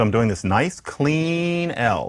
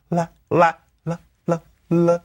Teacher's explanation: So I'm doing this nice clean L. This L that flips gracefully into the A.